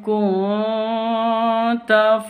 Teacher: nun sukun berjumpa dengan ta samar didengungkan